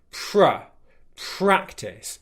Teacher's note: a nice strong R sound without your tongue touching the roof of your mouth